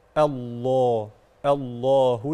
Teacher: الله اسم الجلاله هنا اللام فيه مفخمه